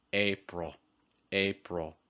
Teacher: ending on a dark L sound